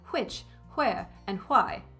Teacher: aspirating or putting extra breath through your W sound when it's spelled along with an H